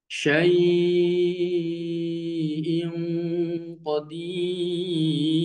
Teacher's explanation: ya syainya dibaca empat harakat